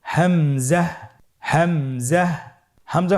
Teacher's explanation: হামজা হরফটি উচ্চারণের ক্ষেত্রে বারিক করে উচ্চারণ করতে হবে এবং এখানে টেনে পড়া যাবে না। দ্রুত পড়তে হবে।